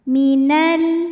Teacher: Sebab alif lam menghadapi huruf qamariah yaitu huruf k. Maka lam sukun dibunyikan dengan jelas. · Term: alif lam qamariah